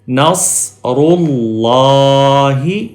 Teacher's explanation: یہاں پہ پیش ہے اس لیے اللہ کا لام موٹا پڑھیں گے